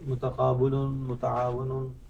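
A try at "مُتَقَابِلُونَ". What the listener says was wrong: No. Harakat will change. That is with Dhamma here, and this is Kasra.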